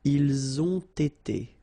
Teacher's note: You get first the liaison z, and then you get the t.